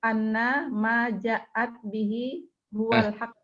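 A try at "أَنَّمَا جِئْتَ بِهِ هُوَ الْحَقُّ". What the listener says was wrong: ja'at mah nggak ada alifnya. Annama ji'ta bihi huwal haqqu.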